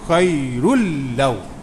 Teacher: Memasukkan huruf pertama ke dalam huruf kedua. Bila masuk tu jadi tasdid lam tu, macam seolah ada dua lam. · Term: idgham